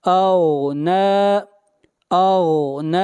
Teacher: اغنی، غین کو موٹا پڑھیں گے، غین حروف مستعلیہ میں سے ہے۔ اغنی اغنی، نون کو کھینچ کر پڑھیں گے ایک الف کے برابر، یہاں پر کھڑی زبر ہے